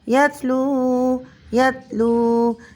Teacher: یہاں پر بھی واو ساکن سے پہلے پیش ہے تو واو مدہ ہو رہا ہے، ایک الف کے برابر کھینچ کر پڑھیں گے اور وقف میں تبدیلی نہیں ہوگی۔